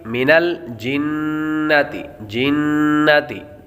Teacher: نون مشدد ہے، نون مشدد پر ہمیشہ غنہ ہوتا ہے